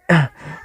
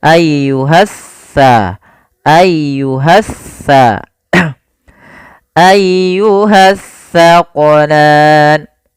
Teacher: Nah, sering terjadi kesalahan, banyak di antara kita membaca huruf sa dan sin dibaca sama padahal dia berbeda. Yang mana kalau sa ujung lidah kita wajib menempel dengan gigi seri depan